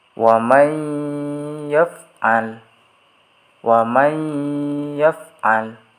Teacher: Di situ ada nun sukun bertemu dengan huruf ya, jadi harus dibaca dengung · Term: idgham bi gunnah